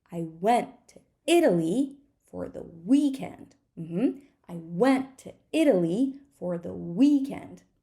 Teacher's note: which words are the content words went Italy and weekend